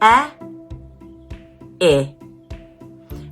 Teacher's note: your mouth is less closed when you say I compared to E